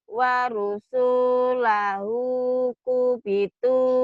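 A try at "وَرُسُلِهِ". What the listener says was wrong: Waro, bukan waru, waro.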